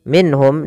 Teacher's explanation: dijelaskan suara nunnya karena dia izhar halqi